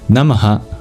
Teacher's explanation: that H that you find at the end of Namaha, it's a visarga, an expulsion of breath, and there's grammatical rules for what sound it makes, depending on the next sound that follows.